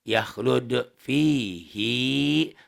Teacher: Hi dalam kata pihi tersebut mesti dibaca panjang walaupun yang sebelumnya itu mati. Mad mubalaghah ini ya, tekanan suara pada hi.